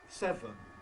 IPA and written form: ˈsevən (seven)